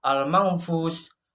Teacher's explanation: Cara membacanya samar-samar membentuk huruf fa. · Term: ikhfa hakiki